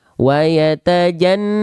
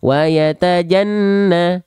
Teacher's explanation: Dua harokat gunnah itu lebih lambat. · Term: 2 harokat gunnah